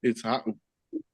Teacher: But the word is poloaina, but there's no glottal stop, so you can just say it the way you had it. And but you say the au, there's a glottal stop there.